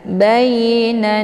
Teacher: untuk na ini dibaca panjang karena kita sudah mewakaf di sini. Ini dinamakan dengan mad arid li sukun ya.